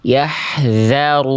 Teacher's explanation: Nah zalnya begitu suaranya mengalir tidak tertahan.